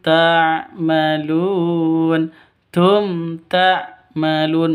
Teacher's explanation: Ta'malun panjang boleh dua, boleh empat, boleh enam. Ketukan karena bacaan mad arid lisukun.